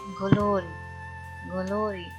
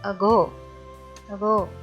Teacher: इसमें कोई इतना खास आपको याद रखने वाली चीज़ नहीं है, बस सिर्फ एक चीज़ है, इसकी प्रोडक्शन जो होती है वो वोकल कॉर्ड्स के साथ थोड़ी सी वाइब्रेशन की साउंड भी होती है। तो जी साउंड हमेशा वॉइस्ड साउंड है, तो आपको याद रखना है कि ये एक वॉइस प्लोजिव है। जैसे वर्ड में देखें ग्लोरी, ग्लोरी साथ में थोड़ा सा वाइब्रेशन वाला एलिमेंट अगो, अगो, ठीक है, अगो, तो वो थोड़ी सी वाइब्रेशन बीच में होनी चाहिए।